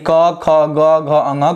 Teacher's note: क वर्ग में क ख ग घ अंग का उच्चारण, ह और अह का उच्चारण कंठ से होता है